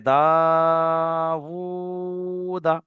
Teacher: প্রথমে একটা দা রয়েছে শেষেও দা রয়েছে কিন্তু আমি প্রথম দাটা এক আলিফ টান দিয়েছি